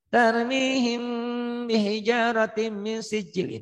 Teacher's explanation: Itu tarmihim. Banyak orang yang baca tarmihim, banyak diidharkan. Padahal itu ditahan, bindeng. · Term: Iva Syafawi